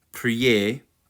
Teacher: by my IPA p uh R lowercase j e so priet that R should be kind of rolled